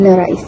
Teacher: Perkataan nerais mengandung diftong AI, iaitu gabungan vokal A dan I yang dilafazkan bersambung sebagai satu bunyi yang pekat. Menjadikan sebutannya lebih lancar dan mencerminkan ciri khas bunyi dialek Melayu Sarawak seperti dalam sebutan nerais.